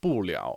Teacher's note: So you add 不 了, like fourth tone, second tone, 不 了 on the end of a verb